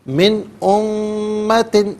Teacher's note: یہاں پر بھی نون ساکن ہے، اس کے بعد حرف حلقی حمزہ ہے تو یہاں نون ساکن کو اظہار کے ساتھ پڑھیں گے، نارملی پڑھیں گے۔